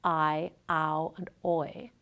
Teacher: Nearly all dialects of English include the three major diphthongs, I, ow, and oi. These ones are called the major diphthongs because they involve large movements of the tongue. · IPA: [aɪ] [aʊ] [ɔɪ]